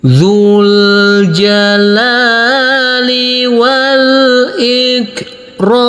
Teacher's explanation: kita lanjutkan dengan enam harakat kita kasih Irama Nada turun